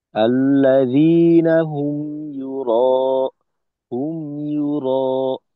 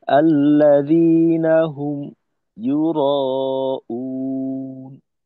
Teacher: আওয়াজ বন্ধ না হয়ে মিমের পরে ইয়ার উচ্চারণটা যুক্ত থাকবে। আল্লাযীনা হুম ইউরা, হুম ইউরা, এখানে যেন এমন না হয় আল্লাযীনা হুম ইউরাউন, এরকম না।